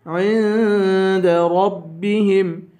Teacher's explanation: عند پہ اخفا کریں گے